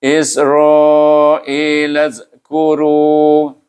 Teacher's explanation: Suku kata ra bunyinya ru juga, baca dengan tebal. Kemudian digabungkan dengan waw, iaitu huruf mad, maka kita baca dengan mad asli.